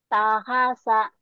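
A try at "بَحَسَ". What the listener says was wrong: bukan ya titiknya satu di bawah. Bahasa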